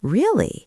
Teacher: make sure your voice goes up at the end. That rising intonation shows you are genuinely interested and listening.